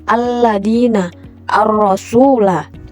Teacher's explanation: Di mana lam syamsiyah ini adalah huruf lam sukun pada al tidak dibaca secara jelas ee melainkan melebur langsung ke huruf syamsiyah setelahnya